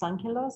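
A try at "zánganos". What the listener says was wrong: Sanganos. Sanganos with an N.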